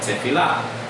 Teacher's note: P becoming an F sound, tefillah